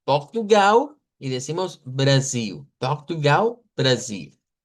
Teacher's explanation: es una de las cosas que lo distingue a diferencia de Brasil que pueden ver que suena como una e muy literal a lo que se escribe y suena la L. Y estamos diciendo en Brasil la L no suena